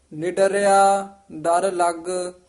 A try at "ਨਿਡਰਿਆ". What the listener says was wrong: ਇਹਨੂੰ ਨਿਡਰਿਆ ਨਹੀਂ ਬੋਲਣਾ, ਕਸ ਕੇ ਬੋਲਣਾ। ਨਿਡਰਿਆ ਡਰ ਲੱਗ।